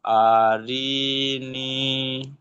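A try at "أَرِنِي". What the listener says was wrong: আরি, টান নেই, আরে নি।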